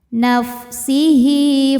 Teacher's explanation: ha damir diapit dua huruf hidup huruf setelahnya selain Hamzah maka halnya ini panjang dua harakat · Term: madsilah qasirah